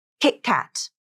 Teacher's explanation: equals stop T this happens in a word like KitKat where the first syllable kit ends in a t consonant and it links up with the next syllable cat which begins with a consonant · when T is at the end of a syllable or at the end of a word and it links up with another consonant it typically becomes the stop T · now you have a stop T in that first syllable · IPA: ʔ, /ʔ/